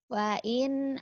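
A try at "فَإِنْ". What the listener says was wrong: kedengarannya kayak wain ya. Tadi kedengarannya kayak wain. fain. ke sayanya wa. mulutnya kurang ngebuka itu teh. Wain gitu. Kurang ngebuka ya. Jadi artikulasinya kurang jelas.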